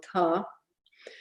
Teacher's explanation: a plain voiceless stop, which is phonetically usually aspirated